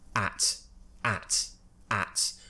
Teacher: I'm spreading my lips slightly but my tongue is right at the front of my mouth at the bottom okay ah at make sure you spread your lips just slightly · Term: forward-facing vowel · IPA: /æ/